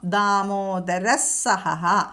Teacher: വിസർഗം കഴിഞ്ഞിട്ട് സ വന്നതുകൊണ്ട് അവിടെ സ ഇരട്ടിച്ചു ചൊല്ലണം